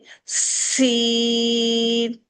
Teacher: اس میں صرف سی باریکی کے ساتھ ادا کرنا ہے اور اس کو وسل کے ساتھ پڑھا جاتا ہے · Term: وسل ساؤنڈ والا لیٹر